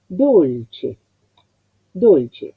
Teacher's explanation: le corresponde la O cerrada que se asemeja, que los labios van más hacia la dirección casi de la U